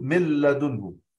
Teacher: هو في كل الأحوال حتى في اللام لما أقول من لدنه أضغمنا وأصبح الحرف مشدد